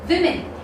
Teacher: This E sound gets converted into I sound, and the O sound in WO gets converted into E sound.